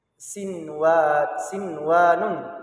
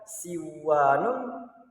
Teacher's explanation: Namun jika hal tersebut dalam satu kata, maka tidak lagi dibaca idgham bi gunnah, melainkan harus dibaca izhar atau jelas